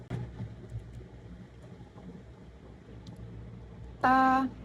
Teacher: konsonan letupan, apikoalveolar, tak bersuara, non-aspirasi